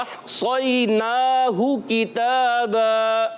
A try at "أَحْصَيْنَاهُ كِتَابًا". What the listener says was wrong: काफ को बारीक रखना है मोटा नहीं होना चाहिए।